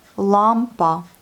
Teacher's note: On a encore l'accent sur la première syllabe. Lampa. Et le L, il n'est pas du tout mou, il est bien dur.